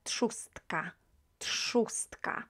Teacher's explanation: It's the reason behind this that is T is a unvoiced consonant, so R that appears after T will be pronounced as S